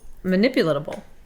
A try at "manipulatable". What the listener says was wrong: You really slammed those last few syllables.